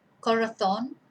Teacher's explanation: so that's where our stress is on the last syllable